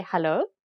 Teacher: Afrikaners will just say hallo with a rising intonation to indicate that it's a question.